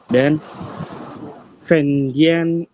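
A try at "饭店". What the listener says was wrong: Fan. Ini bacaan Fan. Fan. Ini dibaca T. Nadanya Fan Tian. Udah ininya berubah, nadanya harus sesuai. Fan Tian.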